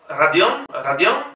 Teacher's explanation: la R en Rusia nunca va a sonar una R fuerte, como un burro, sino Radion, Radion, la primera O no es sílaba tónica, por lo tanto lo pronunciamos como A.